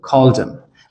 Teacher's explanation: We don't say called him, we drop the H and we say called him.